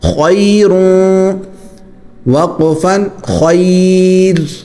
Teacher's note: وقف کی صورت میں یہاں پر را باریک ہوگا، ویسے موٹا ہوگا لیکن وقف کریں گے تو باریک ہوگا کیونکہ پہلے یا آ جاتی ہے.